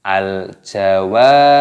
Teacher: dibaca panjang, 2 ketukan saja, jangan panjang-panjang